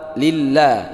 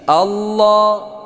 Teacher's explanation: Lillah, la tipis, Allah tebal